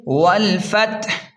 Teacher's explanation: تا کی حمس یعنی ہلکی سی سانس کی آواز بھی واضح ہوگی